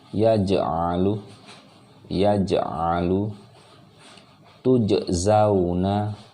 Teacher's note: Jadi harus ada pantulan, jelas pantulannya aj.